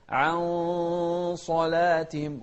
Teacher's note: الحكم هني يعني الغنة تابعة لما بعدها تفخيما وترقيقا، فنقول عن، ما نقول عن، لا، عن صلاتهم، وننتبه للترقيق في العين. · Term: الإخفاء